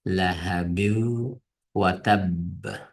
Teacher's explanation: Bu sakinlik nun vav bilan kelgan vaqtida bu ikkisi idg'am bo'lib yeyishib ketadi. Shundan bu binni nunni o'qimay lahabiu deb mana o'qiymiz.